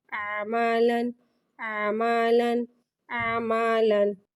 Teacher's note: لام، لام کو ایک الف یعنی 3 مقدار کھینچ کے پڑھیں گے. لام پہ تنوین ہے یعنی کہ 2 زبر ہے، اس کو منہ کھول کے ادا کریں گے. · لام پہ تنوین ہے یعنی کہ 2 زبر ہے، اس کو منہ کھول کے ادا کریں گے. الف آ رہا ہے، اس کو سائلنٹ کر دیں گے یعنی کہ الف کو نہیں پڑھیں گے. عین زبر آ، میم زبر ما، آما.